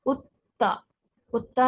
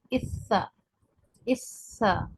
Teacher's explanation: अच्छा, एक काबिल गौर बात यह है कि तशदीद अगर वाऊ पर हो तो तशदीद का ख़ास ख्याल रखें, क्योंकि कुछ हरूफ ऐसे हैं जिन पर तशदीद सिर्फ एक ही मायने देती है कि उसको दो बार पढ़ा जाए, एक बार पिछले हर्फ से मिलाकर, एक बार खुद से, और तशदीद वाले हर्फ को सख्ती से पढ़ा जाए। सख्ती का हुक्म है तशदीद के पढ़ने में।